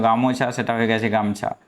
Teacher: শব্দের আদি স্বরে শাসাঘাত পড়ায় মধ্যবর্তী স্বর কোন কোন ক্ষেত্রে লুপ্ত হয়েছে যেমন ধরো গামছা আসলে এটা ছিল গামোছা সেটা হয়ে গেছে গামছা